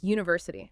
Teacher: the sound is you like the y in yes that's a consonant sound